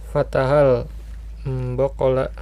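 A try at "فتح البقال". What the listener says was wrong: Fatahal baqolu, ya, bukan baqola.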